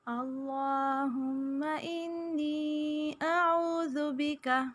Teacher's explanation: ہم کے میم پہ غنہ کریں گے، ناک میں آواز کو چھپائیں گے